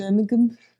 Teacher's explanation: the local Birmingham accent is is quite nasal